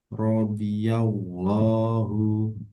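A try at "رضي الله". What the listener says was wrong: Enggak, datnya tebalkan lagi. Radiyallahu.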